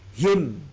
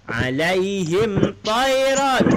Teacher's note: Mem mati dengan ta dengan menjelaskan bunyi mim. Him. Bibir kena betul-betul rapat. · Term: Izhar Syafawi